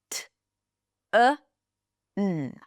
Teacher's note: the tongue blocks the air, and then it gets released with a puff. That's a stop sound.